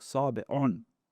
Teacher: there is a dialect in which they drop the ayn, and it becomes a glottal stop, a hamza.